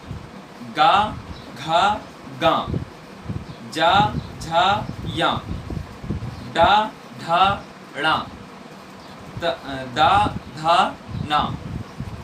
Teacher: ये जो वर्ण हैं इनमें हमें प्रयत्न करना पड़ता है वह है संभार, नाद और घोष नाम का हमें प्रयत्न इन वर्णों के उच्चारण में हमें करना पड़ता है।